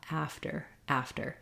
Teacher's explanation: I don't want a strong D just a nice light flap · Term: flap T